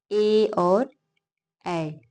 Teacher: कंठ और तालु से उच्चारित होते हैं। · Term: कंठ तालव्य